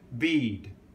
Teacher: if it's got after it a voiced consonant then that voiced consonant because the voicing is continuing you will tend to stay on your voice so the vowel tends to be longer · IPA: iː d